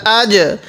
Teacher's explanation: তো জিম আসছে তাহলে আমরা একটু ধাক্কা দিয়ে পড়ব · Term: কলকলা হরফ